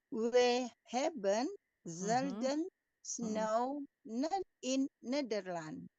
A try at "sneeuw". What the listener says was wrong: Bukan snow, snow itu Inggris tapi ini baca susah ini, paling susah. Sneeuw. Coba kita baca semua sneeuw. Sneeuw. Ya, ini agak sulit. Bunyi gitu ya, dikombinasi itu jarang yang bisa diucapkan seperti how. Sneeuw bukan snow.